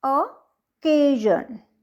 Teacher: तो इसमें सेकंड के ऊपर स्ट्रेस लगा हुआ है